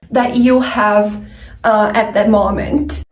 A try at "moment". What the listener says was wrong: I cannot say at the moment. At the moment. We cannot use the short ah sound like hot and stop and mom. We need the long o sound like no and go and phone, moment, at the moment.